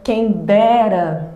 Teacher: a sílaba tônica dessa palavra é o de